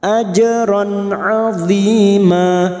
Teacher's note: qolqalah sugro yang mati asli di tengah kalimat